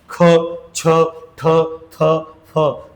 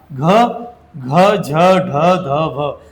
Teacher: ठिकाणी लक्षात घ्यायचं आपल्याला ज्या ज्या व्यंजनामध्ये ह चा उच्चार होतो ज्या ज्या व्यंजनाच्या शेवटी ह चा उच्चार होतो त्यांना काय म्हणतात महाप्राण म्हणतात · आता महाप्राण आणि अल्पप्राण कसे लक्षात ठेवायचे, लक्षात घ्या. ज्याच्या शेवटी हचा उच्चार होतो त्यांना महाप्राण म्हणायचं